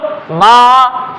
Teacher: माँ जैसे ही बोलोगे नाक पे प्रेशर पड़ेगा। नाक पे जब प्रेशर पड़ेगा, इसका मतलब नाक का भी यूज करना पड़ रहा है आपको, नाक का भी यूज करना पड़ रहा है, तो अनुनासिक व्यंजन, या हम इन्हें कह सकते हैं नासिक्य व्यंजन।